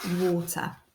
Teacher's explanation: the letter a is making a bit of an or sound although it's not quite a full or sound